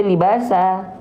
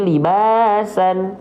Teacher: Apakah vokal an-nya tetap dibaca kita dengan vokal an menjadi libasan kalau berhenti? Tidak, ya, tapi kita baca menjadi libasa. Nah, ya, kalau berhenti libasa, ya, nggak lagi libasan, tuh, nggak lagi libasan, ya, nggak lagi libasan, ya.